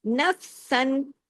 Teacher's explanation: نفسن، نف جماؤں کے ساتھ، سین دو زبر، سن پورے اظہار کے ساتھ، کوئی غنہ نہیں ہے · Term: اظہار حلقی